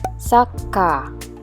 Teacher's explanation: with the presence of chisaitsu, the consonant K was doubled